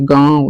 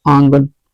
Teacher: स्वर उच्चारण में वायु ध्वनि मुख के साथ नाक से भी ली जाती है। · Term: अनुनासिक